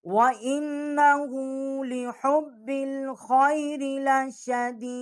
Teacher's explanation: الٹا پیش ہے، اس کو ہم اٹھا کے پڑھیں گے ایک الف جتنا